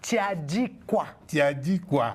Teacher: Il y a le U qui devient le I.